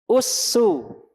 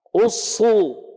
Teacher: Kalau sin dhammah kan usu ringan. Usu ringan. Pangkal lidah nggak naik. Kalau dhammah, shad dhammah, naik pangkal lidah.